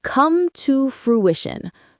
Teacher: Stress on the second syllable of fruition.